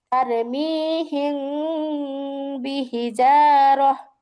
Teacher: হিম না বলে আমরা এই জায়গায় হিং বলতেছি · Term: ইকফা